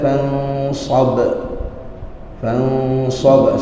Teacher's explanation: faidza faragta fansab fansab sekali lagi ikhfa bertemu dengan sad kemudian ikhfa sebab Nun bertemu dengan sad dan makhraj Nun tu dekat dengan sad